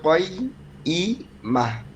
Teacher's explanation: কয়্যিমা, ইয়ার যেহেতু 2 বার উচ্চারণ হবে